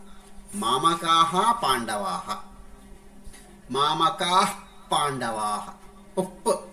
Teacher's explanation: అది ఎక్కడ ఉచ్చారణ ఉంటుందంటే రెండు పెదవులు కలుస్తాయి. రెండు పెదవులు కలిసినప్పుడు ఎప్పుడైతే గాలి బయటికి వస్తూ ఆగిపోతుందో అప్పుడు అర్థ విసర్గ యొక్క ఉత్పత్తి జరుగుతుంది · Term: ఉపధ్మానీయము